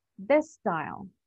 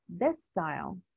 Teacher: we pronounce the letter S in this case only one time because the first word ends in the S sound and the next word starts with the same sound.